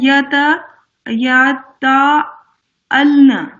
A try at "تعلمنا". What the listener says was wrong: نہیں لام میم ہے نا، این لام میم ہے، پورا پڑھیں.